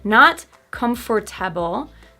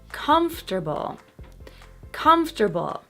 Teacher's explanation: The stress syllable is so strong that the one after it pretty much disappears.